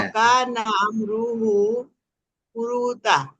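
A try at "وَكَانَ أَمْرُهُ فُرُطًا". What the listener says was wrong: ফুরুত, তা না ফুরুত, তোয়া জবর ত। দুইটা জায়গাতে মাত নাই, মাত চলে আসে, এটা আমাদের বাংলা তো আমরা করে ফেলি অনেক সময়।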